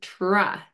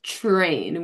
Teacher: When we say the TR blend in our language, It's a ch affricate R